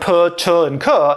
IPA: p, t, and k